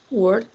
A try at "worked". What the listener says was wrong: Worked. Sí, sé que es un poco difícil porque no estamos acostumbrados a decir el sonido KT juntos, ¿no? Worked. Worked. Es importante hacer esta diferencia de los sonidos porque así vamos a saber si es pasado o infinitivo.